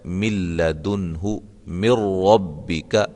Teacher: نون ساکن کے بعد لام آ گئی ہے اور نون ساکن کے بعد را آ گئی ہے، اس کو ہم ادغام کریں گے لیکن غنے کے بغیر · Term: ادغام بلا غنہ